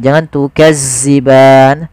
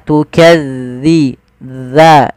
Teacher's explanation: Dzi tipis dalnya tu tidak ada desis tukadziban. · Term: zal